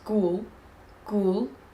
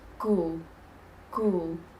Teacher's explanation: keeping those L's at the front of your mouth definitely helps.